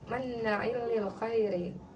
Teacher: Nun gunah itu cara bacanya ditahan dua harakat ya.